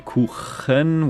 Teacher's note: it can be Kuchen, where the ch is in the back of the throat